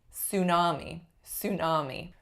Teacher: it's totally allowable and really common to say it with an S